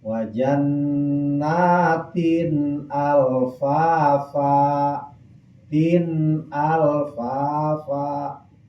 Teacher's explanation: Sabaraha kalimat ieu 2, hiji jannatin, kadua alfafa. Maka tanwin hukumna idhar, macana dijelaskeun suara n